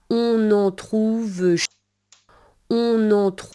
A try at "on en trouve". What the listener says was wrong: So it's on en, not en en. Okay, and then the next thing is trouve does not sound like the English word true. It's not trouve, it's trouve. Can you make the two different sounds? I'll make the English one and then the French one. Trouve, trouve, trouve, trouve.